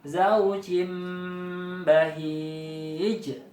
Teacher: Cara bacanya sama seperti membaca huruf mim, dibaca mendengung. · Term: iklab